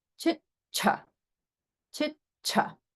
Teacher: the cha is the Mahaprana version of cha. So if you're reading this in the English transliteration script, don't be confused.